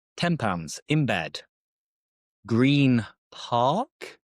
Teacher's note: So it's not that noticeable. But before you prepare for that P or B, it sounds more like an M. £10 in bed. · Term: assimilation